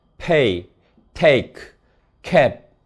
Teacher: 강세 음절 초라서 기음화가 일어납니다.